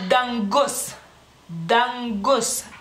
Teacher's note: Cuando en lituano realmente no lo hacemos, la lengua se queda detrás de los dientes